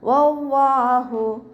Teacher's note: വല്ലാഹു, ഇവിടെ അവ്വ എന്നുള്ള നാമത്തിന് മുന്നേ ഉള്ള അക്ഷരത്തിന് ഫതഹ വന്നതുകൊണ്ട് അവ്വ ലാമ് ഉയർത്തി ഉച്ചരിച്ച് കൊടുക്കുക കേട്ടോ. വല്ലാഹു, ഹൻ്റെ സൗണ്ടിനെ വ്യക്തമാക്കി കൊടുക്കുക. ഹംസയായി പോവരുത്. അഖ്സൽ ഹൽക്കിൽ നിന്നാണ് വരുന്നത്. സൗണ്ടിനെ വ്യക്തമാക്കി കൊടുക്കുക.